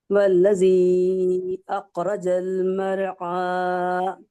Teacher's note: را موٹی پڑ جائیں گی کہ را ساکن ہے، اس کے پہلے زبر ہے